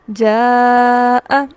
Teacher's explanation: اس کی مقدار کیا ہے؟ اس کی مقدار توسط ہے، یعنی اسے 4 حرکات یا 2 الف کے برابر لمبا کیا جاتا ہے · اس کی مقدار مد اصلی سے ڈبل ہے. جتنا لمبا میں لفظ جیم زبر الف جا کو کروں گی اس سے ڈبل میں لمبا کروں گی اب اس کو جاء. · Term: مد واجب متصل